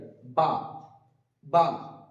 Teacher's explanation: বা উচ্চারণ করার সময় আমরা খেয়াল রাখবো দুটো ঠোঁট একসাথে মিলিত হওয়ার পরে ছেড়ে যাবে, বা বা, যেন কোন রকম আলিফের মতো বাতাস না বেরোয়, বা।